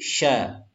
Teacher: Ini sya, hati-hati, bukan sa, tapi sya. Sya memiliki sifat tafashi. Tafashi itu ada aliran di dalam mulut kita. Tempatnya adalah di tengah lidah.